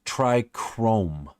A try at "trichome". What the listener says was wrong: Trichomes, trichromes. no R in it. It's not chrome. It's CHOME.